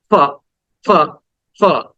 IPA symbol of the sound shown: f